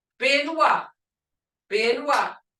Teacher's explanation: Creek B is unaspirated, said without the puff of air